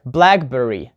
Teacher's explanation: we put the stress on the first part like blackberry